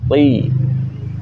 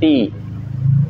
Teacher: mengangkat pangkal lidah karena pangkal lidah menaik sehingga keluarlah huruf yang bunyi tebal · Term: isti'la